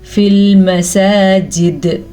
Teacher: سین کو کھڑی زبر کے حساب سے لمبا کریں گے